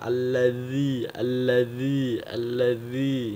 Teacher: ujung lidah kita nempel ke ujung gigi seri atas dan ujung lidah kita keluar sedikit yang dari batas gigi dari ujung gigi keluar sedikit ujung lidahnya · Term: huruf dza